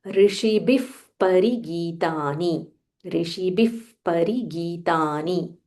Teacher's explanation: Rishibihi, sh, murdhanya sh, Rishibihi, bha mahaprana, and there is a visarga followed by pa. So when we join, we say Rishibif parigitani. Rishibif parigitani.